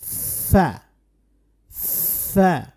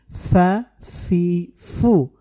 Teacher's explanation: ফা হরফ উচ্চারণ করার সময় অবশ্যই বাতাস রাখবেন, উপরের দাঁত, নিচের ঠোঁটের পেট।